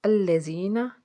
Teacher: یا ساکن سے پیچھے زیر ایک الف کے برابر کھینچیں گے